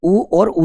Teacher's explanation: इनके उच्चारण में अपने होठ पूर्ण रूप से गोल हो जाते हैं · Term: पूर्ण वृत्ताकार